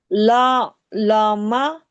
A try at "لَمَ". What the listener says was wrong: लमा क्यों? लाम मीम दो, लाम मीम जबर